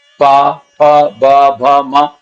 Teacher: इनका उच्चारण करने के टाइम पर होठों को एक दूसरे के साथ टकराना ही होगा